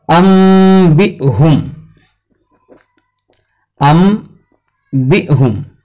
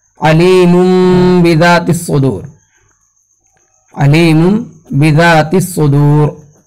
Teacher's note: जैसे अम्बिहुम, अम्बिहुम, तो अनबिहुम है असल, ये अनबिहुम। नून के बाद बा है तो नून को हमने क्या किया, बदल दिया मीम से और वहां पर गुन्ने के साथ अदा किया गया, तो इसको कहा जाता है क़ल्ब।